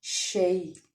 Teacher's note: یا ساکن سے پیچھے زبر ہے، اس لیے یا لین کا قاعدہ ادا ہوگا، اور اس کو ہم نرمی سے معروف طریقے سے ادا کریں گے